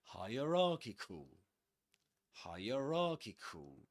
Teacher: And actually, this word is double stressed, which means that the main stress goes on ra, and the secondary stress goes on higher